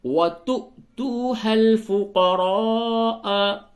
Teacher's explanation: واو کے اوپر حمزہ ہے، یہاں پہ جھٹکا ہوگا، اور یہ جو دوسرا والا جو واو ہے یہ واو ساکن ہے، اس سے قبل پیش ہے تو یہ واو مدہ ہے۔